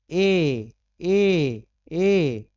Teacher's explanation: कंठ और तालु दोनों लगता है इसमें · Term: कंठ तालु